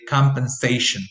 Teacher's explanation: primary stress will fall on the syllable before the last one